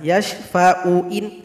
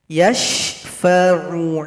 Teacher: huruf Ain yang berdekatan Jangan dibaca Hamzah